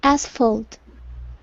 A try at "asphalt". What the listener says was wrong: Okay, very good.